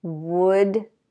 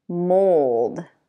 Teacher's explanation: So the first one is uh, the second one is oh, as in boat.